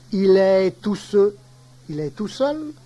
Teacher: Il y a généralement suppression du L terminal